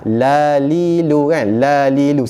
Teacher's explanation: Makhraj lam di mana? Hujung lidah kena lelangit depan.